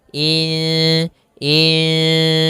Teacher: nunnya kita samarkan kepada huruf Sin kemudian terdengar suara samar-samarnya in Insan panjangkan dulu dengungannya atau panjangkan · panjangkan dulu bacaan gunanya dua harakat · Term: Ikfa, bacaan Ikfa